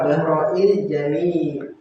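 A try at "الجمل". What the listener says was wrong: Jumal bukan jamil. Jamil. Bukan jamil itu ganteng.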